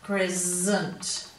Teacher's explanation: In crescent, we've actually got the S and the C making the Z sound. So it also says down here that S and C may both say S, but they may also say Z.